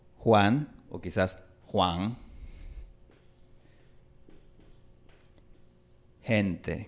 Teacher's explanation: Esta consonante en el español neutral se pronuncia como una fricativa velar, que es prácticamente como una K, pero más suave, es como una K suavizada. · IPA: /x/